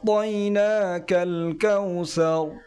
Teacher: কাউসার এখানে যে আইনটি রয়েছে আইনটি গলার ভিতর থেকে একটু চাপ দিয়ে উচ্চারণ করতে হবে। লাস্টে যে রটি রয়েছে এ রটি একটু পুর করে উচ্চারণ করতে হবে।